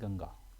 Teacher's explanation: अनुस्वार इसमें आवाज कैसी निकलती है नाक से निकलती है